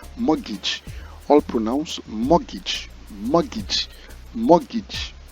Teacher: the letter T in this word is silent